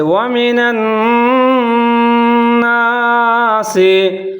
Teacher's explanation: یہاں نون مشدد ہے، نون کے اوپر شد نظر آ رہا ہے، تو یہاں آپ نے گنا کرنا ہے